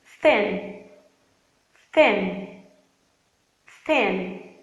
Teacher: Se você reparar, você não está usando as suas cordas vocais. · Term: unvoiced TH